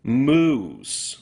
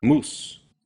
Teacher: Spanish consistently will use just one pure U